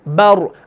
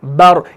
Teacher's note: अब रॉ को मैं मोटा कर रहा हूं।